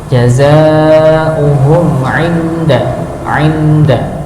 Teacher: mim sukun bertemu dengan ain ya, dibaca idhar, dijelaskan